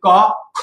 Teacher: একটু এই কাগজটির দিকে লক্ষ্য করো যে যদি বলি ক খ যখন আমি খেলেছি তখন কাগজটি নড়ে গেছে দ্যাট মিন্স বাতাস অনুভব হয়েছে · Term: মহাপ্রাণ